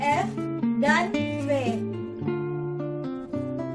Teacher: Bunyi labiodental, yaitu bunyi yang dihasilkan oleh keterlibatan bibir labium bawah dan gigi dentum atas. Bibir bawah sebagai artikulator menyentuh gigi atas sebagai titik artikulasi.